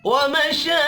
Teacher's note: را کو زیر کی وجہ سے باریک پڑھیں گے